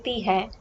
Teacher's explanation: That is a formal ending because hai is nasalized. It's not necessary to make both the words nasal.